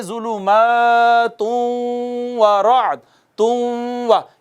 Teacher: یہ نون ہے نون ہے نون ہے، تو اس نون کے بعد آگے واو آ گئی ہے، نون تنوین کے بعد واو آ گئی جو کہ حروف ادغام میں سے تھی، تو یہ تھا ظلمات، تن وراد تھا نا، تن وراد، تن کا جو نون ہے اس کا ادغام ہو گیا واو میں، تبھی تو واو مشدد ہے، تو پڑھیں گے ظلمات ورعد، تم و، ایک الف جتنا اس پہ ادغام غنہ کرنا ہے ہم نے، ادغام بالغنہ ہو گیا۔